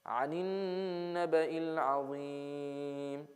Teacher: we have noon with shadda, so we have a gunna